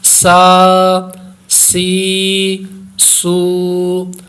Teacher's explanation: سین پڑھیں گے تو سین میں سیٹی کی آواز پیدا ہوگی، حروف صفیریہ ہے